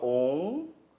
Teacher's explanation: em algumas variantes do português brasileiro há um ditongo nasal decrescente